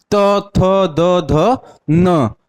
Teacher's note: इन वर्णों का उच्चारण हम कहां से करते हैं अपने दंत से